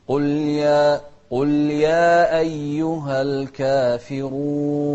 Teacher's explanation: الراء مضمومة، فإذن هي مفخمة